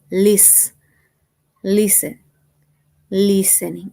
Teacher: Listening, el acento va en la primer sílaba.